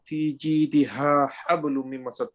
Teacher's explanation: the strong ha and the soft ha, they meet together